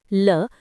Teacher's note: जिसके उच्चारण में हवा जीभ के पार्श्व बगल से निकल जाए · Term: पार्श्विक